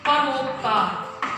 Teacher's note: अ और उ के संयोग से क्या ध्वनि बनती है? ओ ध्वनि बनती है।